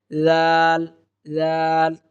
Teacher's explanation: জিহ্বার আগাটা উপরের দাঁতের আগায় লাগিয়ে দিলে জাল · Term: জালের উচ্চারণ